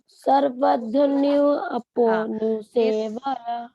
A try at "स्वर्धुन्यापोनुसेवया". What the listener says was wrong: सर्व नहीं है, पहले स व और फिर र है तो क्या हो जाता है? स्वर होता है ना, स्वर.